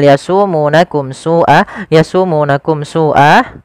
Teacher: Yasumunakum su'a, tidak boleh yasumunakum su'a, tidak boleh ditahan, tapi dia dibaca dengan jelas suara mimnya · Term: izhar syafawi